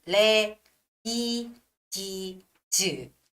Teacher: You don't make like smooth sound, linking all the sounds there. You don't go to ladies, but you would say le, di, ji, zu. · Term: box each sound